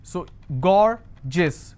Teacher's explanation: So gorgeous, 2 syllable, I will stress on gore.